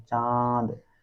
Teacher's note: नाक से कम मुख से ज्यादा हवा निकल रही है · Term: अनुनासिक